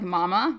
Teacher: they'll Babble with this m sound because it's bilabial we're using our lips and babies can see that being made so it's one of